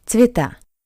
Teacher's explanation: I is stressed, ye is unstressed, that's why we pronounce ye as I